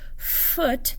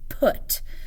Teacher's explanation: there's some constriction with my lip and my teeth that's making that F sound